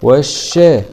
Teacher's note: لام سكون شمسية مدغمة في الشين المشددة مع الفتح